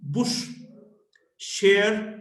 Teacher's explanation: sha voiceless post-alveolar fricative